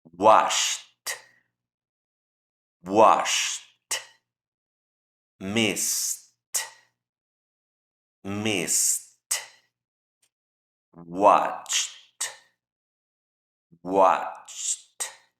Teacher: Al agregarle el ed, ese ed va a ser pronunciado así como una T. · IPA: /t/